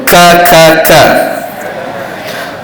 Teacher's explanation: sifat apa Panggil syiddah tekan tekan pada rongga yang mana H Kaf ini berada di anak tekak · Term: huruf Kaf